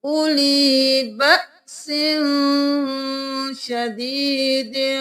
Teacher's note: اولی بأس، یہاں پر ہم اولی نہیں کریں گے کیونکہ واو خالی ہے، اس کو نہیں پڑھیں گے، حمزہ پیش او، لام زیر یا لی، اولی، اولی بھی نہیں کریں گے کیونکہ لام زیر کے ساتھ یا مدہ ہے تو ہم ایک الف کے برابر کھینچیں گے